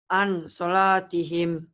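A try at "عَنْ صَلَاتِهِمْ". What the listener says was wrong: Salah baca begitu. Yang benernya harus Ikhfa. Jadi bunyi N-nya agak bindeng ya. Salatihim. Tuh lihat ya. Ditulisnya ada N. N nih ya. Ditulisnya ada N. Tuh. Dibacanya ditambah G. Jadi eng. Ang. Tapi jangan ang semua ya.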